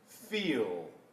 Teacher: if you pull the tongue back into the throat more, sort of swallowing that L, and possibly the tongue touching further back, or possibly the tongue not touching at all and just being drawn back, that is more of a dark L sound, as many people would call it. · the L at the end of the word feel happens a little bit further back as a darker vowel